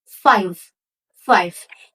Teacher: You can try to say five, and you will feel that your lower lip touch your upper teeth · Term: Labiodental